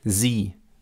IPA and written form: ziː (sie)